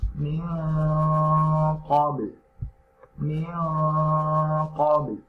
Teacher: jika ada huruf qaf dan huruf ka sebelumnya nun sukun atau tanwin, maka dengungannya itu hampir menyerupai ng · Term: ikhfa